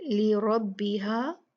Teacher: را ہیوی ہوگی، بھاری ہوگی، مفخم ہوگی کیونکہ اس پہ فتحہ ہے